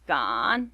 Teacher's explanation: said with a falling and rising third tone